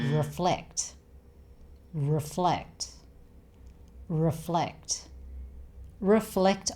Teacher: 'Flect' is the stressed syllable here, so it's reFLECT not REflect.